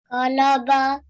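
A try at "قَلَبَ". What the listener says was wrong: Well done.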